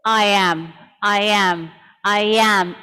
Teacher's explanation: there is also a linking Y sound that can be heard in some transitions